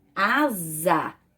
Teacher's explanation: s entre duas vogais um s só tem um som de z